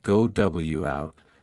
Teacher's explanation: native speakers often add a slight glide like a W or Y sound to link them smoothly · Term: Vowelto vowel linking